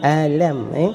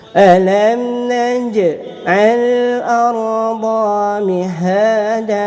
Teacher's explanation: Ingat mulut tutup tanpa dengung.